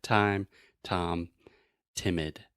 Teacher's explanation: the very front part of your tongue is touching the top of your mouth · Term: true T